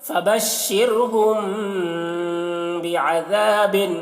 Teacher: شین کو پڑھیں گے را کو باریک پڑھیں گے اور میم میں اخفاء شفوی ہو رہا ہے. ذال کو جو ہے باریک پڑھیں گے.